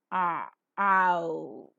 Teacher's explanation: And if you look into the same diagram, the second glide, you could find that the glide begins with a, which is the back position, unrounded, between half open and open, and moves towards oo